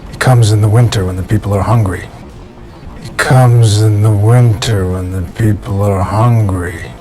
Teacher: with statements, you'll see an intonation pattern that is what we call a falling intonation. It goes down at the end.